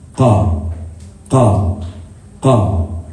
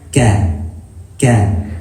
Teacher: The qaf is like the furthest part in the tongue and it closest to the throat. The kaf is a little bit right in front of it, so it's softer.